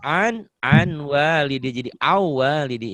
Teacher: Kalau setelah nun mati atau tanwin bertemu huruf-huruf idgham, maka jadi melebur. Bunyi n-nya berubah menjadi bunyi di depannya. Kalau bunyi n ketemu jadi dengan waw, w berarti jadi w.